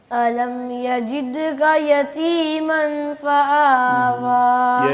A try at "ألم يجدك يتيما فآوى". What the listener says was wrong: یہاں اخفا آ گیا ہے دوبارہ سے نا, یعنی کہ نون کو چھپانا ہے, تھوڑا لمبا کرنا ہے آواز کو. دال کو ایسے نہ ہو جیسے شد محسوس ہوتی ہے دال کے اوپر, شد محسوس نہ ہو, صرف قلقلہ کرنا ہے. جد د زور سے نہیں کرنا, ذرا نرمی اختیار کریں.